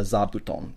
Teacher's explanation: originally it was fu, but when the fu is combined with another kanji, it becomes voiced. So that's why we now get zabuton.